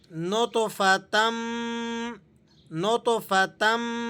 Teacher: اب آگے دیکھیے گا، یہاں تا پر 2 زبر کی تنوین لگی ہوئی ہے اور میم مشدد ہے، تو ہم نے تا کو میم کے ساتھ جوائنٹ کر دینا ہے، ملا کر پڑھنا ہے